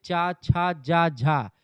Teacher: चा छा जा झा जो होते चा वर्ग के वर्णों के उच्चारण में स्पर्श भी होता है और हवा रगड़ करके संघर्ष करते हुए बाहर निकलती है, इसे स्पर्श संघर्षी व्यंजन कहा जाता है।